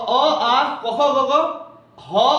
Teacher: अ आ क ख ग ग ह और विसर्ग का उच्चारण स्थान क्या होता है तो कंठ होता है